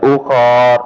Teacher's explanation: ukhar ketika kita berhenti tidak dipanjang